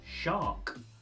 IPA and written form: ʃɑːk (Shark)